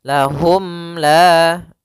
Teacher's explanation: Lahum la sambil menyempurnakan daripada huruf mimnya. Bibir kita dirapatkan. · Maka untuk panjang izhar untuk cara membacanya, yaitu suara mimnya tidak boleh ditahan, tidak boleh lahum la, tapi akan tetapi dia harus jelas dan langsung saja. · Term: izhar syafawi